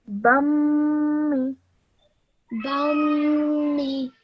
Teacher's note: When you join the ba to the meme mushaddad, you do so holding that meme sound in your nose for 2 seconds. Bummy. Bummi.